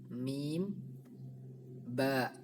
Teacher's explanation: Syafawi karena dua huruf yang bertemu tersebut yaitu mim dan Mbak keduanya merupakan huruf yang memiliki makhraj yang sama yaitu jenis makhraj syafatain atau makhraj 2 bibir